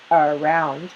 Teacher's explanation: in the word around, which is two syllables, the first syllable is short and weak. It's unstressed.